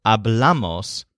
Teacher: the first person plural, hablamos, has the stress on the second syllable, bla, instead of the first syllable, a.